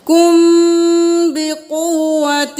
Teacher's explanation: اب میم کے بعد با آ گیا تو غنہ کریں